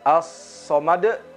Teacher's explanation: ada qalqalah pada huruf dal